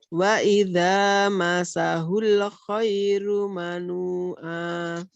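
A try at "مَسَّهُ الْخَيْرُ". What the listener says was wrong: Depannya tasdidnya ya, double. Masahul. Masahul. Coba diulang.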